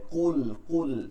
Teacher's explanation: কুল, কফ লাম পেশ, কুল, কুল এটাকে ভারী রাখতে হবে। কুল, কুল কফের উচ্চারণটা আমাদের হলক থেকে, যেখান থেকে জিহ্বার গোড়া এবং হলকের গোড়া আগা থেকে উচ্চারণটা করতে হবে, শেষ থেকে। কুল, ইয়া খারা জবর এক আলিফ টেনে পড়তে হয়, আমরা জানি মাদের হরকত।